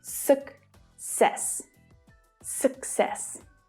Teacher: The first C is pronounced as a K sound at the end of the first syllable. And the second C is pronounced as a S sound at the start of the second syllable.